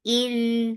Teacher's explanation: Hamza is sharp. For kasra, give E sound attached with lam. Lam will get zip of tawassut.